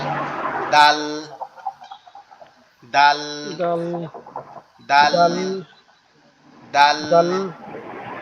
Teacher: এটা উচ্চারণ হবে আমাদের জিহ্বার আগা, সামনের 2 দাঁতের গোড়ার সঙ্গে লাগবে, সামনের 2 দাঁতের গোড়ার সঙ্গে লাগবে, লেগে উচ্চারিত হবে দাল দাল দাল দাল দাল দাল দাল এভাবে।